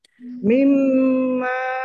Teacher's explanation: Ini mim tasdid maka dibaca gunnah atau mendengung. Dengung. Tahan biar tampak dengungannya.